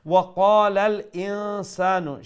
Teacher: ওয়াকালাল ইনসানু, সেখানে হামজাটা মানে শক্ত করে উচ্চারণ করার অক্ষর, তো হামজাকে মানে খুব পাওয়ার দিয়ে শক্তি দিয়ে সেটা উচ্চারণ করবেন, এবং ইনসান নুন সাকিন সেখানে ইকফা করতে হবে।